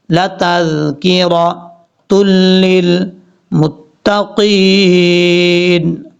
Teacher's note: تا کو لام سے ملائیں گے، پھر میم کو تا سے ملائیں گے